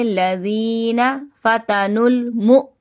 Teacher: یہاں پر بھی آواز پلٹ کر آئے گی، ٹھیک ہے۔ نون مشدد کا پہلے گننا کریں گے